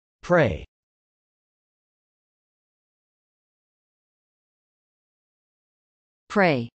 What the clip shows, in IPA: prˈeɪ